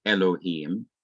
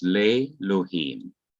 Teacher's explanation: the preposition lameth come before a word elohim and notice that the composite shiva drops out this section of the word is not pronounced · the short e is lengthened to long e